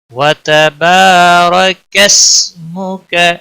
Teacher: اور کاف کو سین کے ساتھ ملایا جائے گا۔ وتبارک اسمک، کس سین کو ہلانا نہیں، کسمک، اور کاف کو بھی کھینچنا نہیں۔